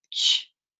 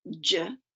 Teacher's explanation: Friction is caused as air is obstructed and forced through a narrow space. There are two affricates, ch and j. They differ only in voicing.